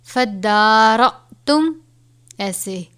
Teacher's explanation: حمزہ ہے اور جزم ہے، اسے حمزہ ساکنہ کہتے ہیں. حمزہ ساکنہ ہو تو اس کو جھٹکا دے کر پڑھیں گے